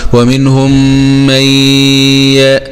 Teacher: إدغام بغنة يغني بمقدار حركتين